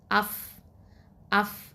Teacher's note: அதாவது மேல வழுந்து நடுப்பற்கள் இருக்கு பாத்திங்களா மேல உள்ள நடுப்பற்கள் முன்பற்கள்ல அதனுடைய ஓரம் வந்து கீழ் உதட்டோட உட்பக்கத்துல இணைஞ்சுதான் இந்த ஃ அப்படிங்கிற இந்த எழுத்து வெளிப்படுது